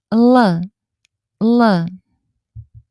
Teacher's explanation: La L en serbio no es suave, es más fuerte que en español.